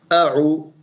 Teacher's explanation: The ain of a'udhu will come out from halaq.